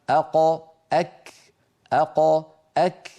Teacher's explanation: فتجدون بأن الكاف متقدمة قليلا على مخرج القاف · القاف من أقصى اللسان مع الحنك اللحمي، الكاف من أقصى اللسان مع الحنك اللحمي والعظمي في آن واحد. فالقاف هنا مثلا والكاف هنا.